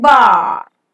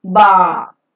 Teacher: The word final r is never pronounced and it remains silent and hence it is pronounced as bar.